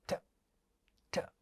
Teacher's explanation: हिंदी में जैसे ट है, ये रेट्रोफ्लेक्स ट अंग्रेजी में नहीं है, ये एल्वियोलर ट है, ट ट, और ये स्टॉप साउंड है.